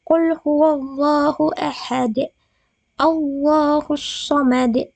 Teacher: lam dalam perkataan Allah didahului oleh fathah atau dhammah, maka haruslah dibaca tebal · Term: lam tafkim